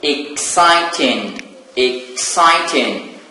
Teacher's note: the stressed syllable is the second syllable